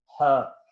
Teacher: glottal जो आपके हल्क से निकलती है, ग्लोटस से निकलती हुई आवाज होती है